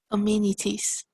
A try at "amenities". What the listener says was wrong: Excellent, very good.